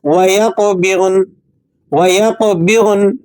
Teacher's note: नून पर लगी हुई हरकत तो आपने गिरा देनी है, लेकिन नून की आवाज़ को आपने पढ़ने में बरकरार रखना है।